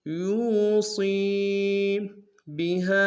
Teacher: ہا کے ساتھ الف مدہ ہے، مدہ کے اوپر چھوٹا سا مد ہے، دو الف مقدار میں کھینچیں گے